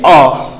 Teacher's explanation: जब आ बोलते हैं तो जीभ थोड़ी बीच उठती है, आ, तो इसका मतलब ये मध्य।